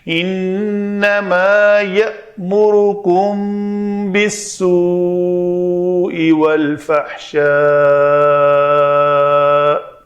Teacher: انما یأمرکم بالسوء والفحشاء، تو یہاں پہ یہ واو مدہ ہے، اس کے بعد سبب مد حمزہ ہے تو یہاں پہ مد ہوگی